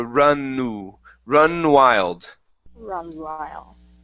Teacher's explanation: Okay, at the end of the N on run, you said runned wild. So connect the N and the U.